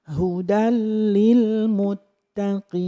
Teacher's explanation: Idgham itu memasukkan, bilaghunnah tanpa mendengung. Jadi, di hudal itu jangan mendengung lama. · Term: idgham bilaghunnah, idgham bila gunnah